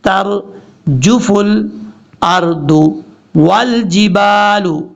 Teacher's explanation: تا کے بعد جو راہ ہے راہ پر پڑھا جائے گا، تا بریک پڑھیں گے